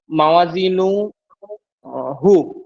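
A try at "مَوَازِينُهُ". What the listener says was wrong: এবার টানটা ঠিক করেন। কোথায় কি টান হবে? নুতে টান হবে এখানে একটা টান হলো। মাওয়া এখানে একটা টান হবে। ওয়া আছে এখানে দেখেন।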